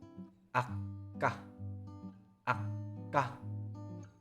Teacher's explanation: you block the air in your throat and release it slightly.